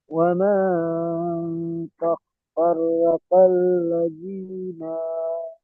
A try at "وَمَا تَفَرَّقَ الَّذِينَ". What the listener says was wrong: না বলে টান দিচ্ছে, নুনের উপর যাবার আছে, টান হবে না।